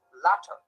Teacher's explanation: one articulator is thrown against another in a single gesture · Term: tap or flap